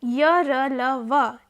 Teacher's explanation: अन्तस्थ अर्थात् य र ल व एतेषां वर्णानां प्रयत्न ईषद् स्पृष्टः